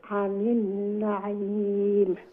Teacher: middle throat থেকে উচ্চারণ হইছে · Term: আইন